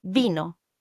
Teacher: The i is pronounced as e like in the English word machine. It's a pure sound unlike the variety you have in English pronunciation of the i. In this case, e is always going to be e.